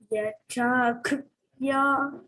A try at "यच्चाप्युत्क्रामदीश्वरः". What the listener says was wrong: यच्चाप्युत् pyut pa is there, no? Pa, half of pa is there.